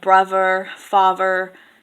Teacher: the TH sound is almost non-existent. It's always a F or a V sound.